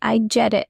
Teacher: Notice how quick it feels. The T in get is soft. It almost disappears. It sounds like I get it. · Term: connected speech